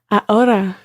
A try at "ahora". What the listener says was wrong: Try to combine the a with the ora and make it one sound and not a stop in between. Ahora.